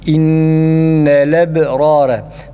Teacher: Verş rivayetine göre innel lebrare dediğimiz zaman hemzenin harekesini lama veriyoruz. Lamı harekeli okuyoruz.